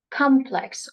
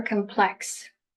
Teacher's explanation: Either you can put the stress at the beginning or you can put the stress on the second syllable.